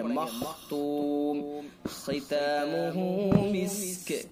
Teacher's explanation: قاف کے نیچے دو زیر ہے، تنوین ہے، تنوین کے بعد یا واو میم نون میں سے میم ہے، لہذا ادغام ناقص بالغنہ ہوگا. خا حروف مستعلیہ میں سے خا کو پر پڑھیں گے